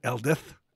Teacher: The double D giving the voiced TH sound, so the southwestern province on the map, for example, is called Eldith, and includes the town of Abernouth.